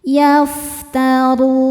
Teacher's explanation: Huruf ra dibaca secara tafkhim karena harokatnya di atas yaitu dhammah. Cara bacanya ra ditebalkan.